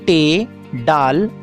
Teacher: معکوسی، اس میں زبان کی نوک اوپر ہو کر پیچھے کی طرف مڑتی ہے اور پھر تالو کی طرف چھوتی ہے